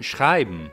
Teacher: one syllable is schrei and the other one is m, where m works as a vowel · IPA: /m/